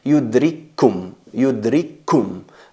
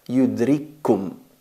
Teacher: idéntica que la otra la primera muda y la otra vocalizada fusionamos la primera en la segunda y se convierte en una letra reduplicado una letra con shadda